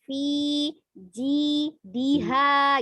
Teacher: Fi panjang, ji panjang ya, maka boleh tuh agak kepisah sedikit.